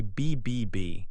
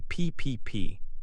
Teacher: Many consonant sounds come in pairs, one voiced and one voiceless. They are made in the same part of your mouth, but one uses your voice and the other does not.